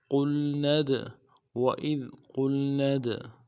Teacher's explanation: قوف کو موٹا ادا کرنا ہے اور قوف کو لام کے ساتھ ملانا ہے، نون کو آگے دال کے ساتھ ملانا ہے۔